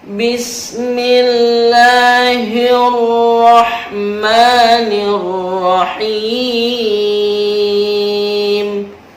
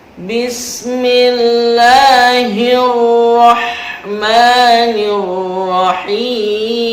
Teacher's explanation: Perhatikan huruf H-nya H kecil, ada di bawah tenggorokan.